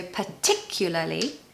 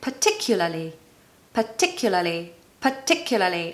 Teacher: the stress is on the second syllable so particularly and the last two syllables are La li la